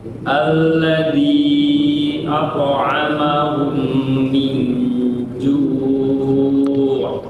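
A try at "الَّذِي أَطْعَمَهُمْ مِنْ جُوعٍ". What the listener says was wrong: Kurang lama gunanya.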